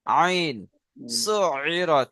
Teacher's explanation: আইন এর মাখরাজ হচ্ছে সুইরাত। হালাকের বা কণ্ঠনালীর মাঝখান হতে উচ্চারিত হয়।